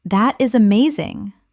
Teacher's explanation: Your tone rises with excitement.